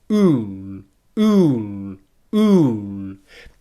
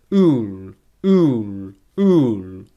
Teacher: All you're going to do is simply make the oo sound, and then for a nice dark L, just lift your tongue up so it touches the roof of the mouth.